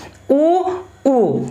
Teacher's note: तो ओंठ से निकलने वाले स्वर क्या है, ऊ, तो ये क्या, ठीक है, ऊ, तो ये होंठ क्या बन रहा है, राउंड बन रहा है कि नहीं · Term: ओष्ठ